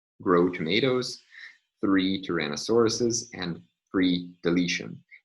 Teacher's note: tapping doesn't apply these remain as stops